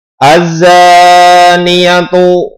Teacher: panjangnya dua harokat Jadi tidak boleh pendek Kalau pendek nanti salah